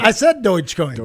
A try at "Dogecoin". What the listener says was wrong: No, Doge. Doge. Doge. The O is different than what you're saying. Doge. You're saying Deutsch. Yeah, no, it's Doge.